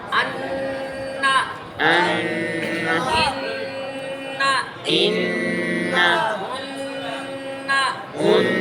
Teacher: एक अलफ के बराबर नाक में आवाज को लंबा करके पढ़ना